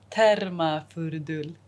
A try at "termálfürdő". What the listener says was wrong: Only ő. Termál. Fürdő.